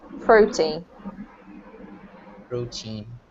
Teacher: So protein has the emphasis on the first syllable.